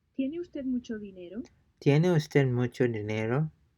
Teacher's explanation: Pay close attention to the rising intonation at the end of the question.